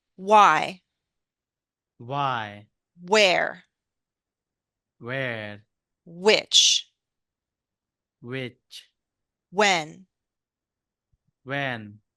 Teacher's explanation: It's true we want information, but anytime we want specific information, that's information and our voice goes down. Only the yes, no questions go up. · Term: falling intonation